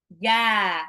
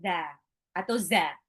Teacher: Jim itu tengah lidah bertemu langit-langit atas.